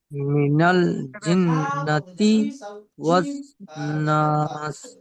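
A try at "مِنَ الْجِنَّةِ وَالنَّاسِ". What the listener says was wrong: এটা নুন। নুনটা টান দেবেন, ওয়ান নাস।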